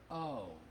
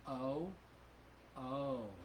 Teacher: I'm moving my lips so that's a diphthong